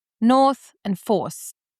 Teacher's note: Aren't they a little bit different in openness? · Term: North Force split